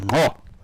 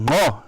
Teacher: You can hear it's a vocal nasal inflection on the click, and it's ngo.